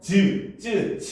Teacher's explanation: 혀 바닥이 붙었다가 떨어지면서 나는 소리거든요